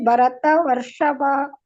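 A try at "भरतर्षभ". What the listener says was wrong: ಆಹಾ ಭರತರ್ಷಭ ವ ಯಾಕೆ ಹೇಳ್ತಾ ಇದ್ದೀರಾ ಅಲ್ಲಿ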